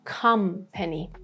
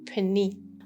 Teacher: For this word of company, after P, we have this Schwa sound.